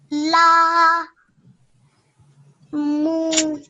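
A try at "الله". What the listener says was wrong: This is a ha. This is a ha, not a meme.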